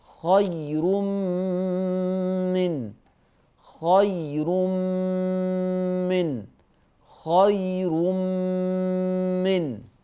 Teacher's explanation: بعد التنوين ضيفه شكلا ايه مشدده التنوين ورا مين ومين مشدده لا يتلفظ بالتنوين يتلفظوا بالحرف المشدد